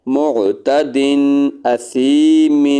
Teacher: دال پر بھی غنہ نہیں کریں گے اور میم پر بھی غنہ نہیں کریں گے، اس لیے کہ دال کے بعد بھی حمزہ ہے اور میم کے بعد آگے بھی حمزہ ہے